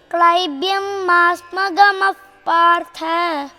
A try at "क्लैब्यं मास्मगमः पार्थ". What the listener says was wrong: That gamaha partha becomes gamah partha.